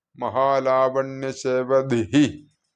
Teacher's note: അതൊരു വിസർഗം എന്നാൽ ഒരു വിടലായിട്ട് ഉച്ചരിക്കാം അതല്ലാതെ മഹാലാവണ്യശേവധിഹി അങ്ങനെയും ഉച്ചരിക്കാം ലാസ്റ്റ് ഏറ്റവും അവസാനം ഹ ചേർത്തുകൊണ്ട് ഹി അല്ലെങ്കിൽ ഹ ചേർത്തുകൊണ്ട് ഉച്ചരിക്കാം